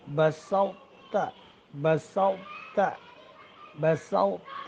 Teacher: جواباً عرض ہے کہ سورہ مائدہ آیت نمبر 28 میں ایک لفظ آیا ہے، بسوت، بسوت، بسوت، یعنی تو کی آواز موٹی باقی رکھنا ہے. تو کی موٹی آواز کو باقی رکھنا ہے، بغیر قلقلہ کے پڑھنا ہے، اور پھر تا کو باریک پڑھنا ہے. چونکہ تو استعلا اور اطباق اس کی صفت ہے، یعنی موٹی صفت ہے، زیادہ پر حرف ہے، تو وہ مکمل ادغام تو نہیں ہوتا تا میں، چونکہ تا کمزور حرف ہے. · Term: ادغام ناقص متجانسین